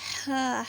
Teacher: یہ ہا جو ہے وہ درمیان والے حلق سے ادا ہوتا ہے یعنی کہ وسطی حلق سے. جب آپ ہا ادا کریں گے تو آپ کی ہوا باہر نکلے گی.